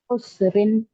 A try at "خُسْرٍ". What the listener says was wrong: खुश, हाँ मोटा, खुसरिन। ख, ख मोटा, देखिए जो मोटे हरूफ हैं उनको उनको ना छोड़ें।